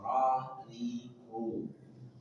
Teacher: ro ujung lidah bertemu dengan gusi dua gigi seri atas